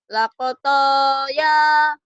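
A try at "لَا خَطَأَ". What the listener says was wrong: Jangan lako, lakho.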